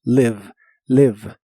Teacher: Recuerda que se pronuncia con la I corta que suena ligeramente como E.